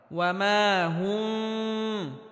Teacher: স্পষ্ট করে পড়তে হবে। অর্থাৎ মিমে হালকা আওয়াজ জারি রেখে উচ্চারণ করতে হবে, তবে গুন্নাহ করা যাবে না। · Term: মিম সাকিন